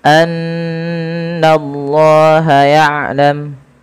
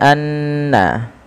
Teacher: Setiap kita mendapati adanya nun berharakat tasydid, kita tahan dulu suara bunyi nnya sepanjang dua harakat. Karena ia kita namakan dengan bacaan ghunah.